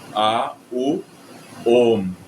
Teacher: graças ao Sandhi, algumas palavras em sânscrito, quando você tem A, U, vira O.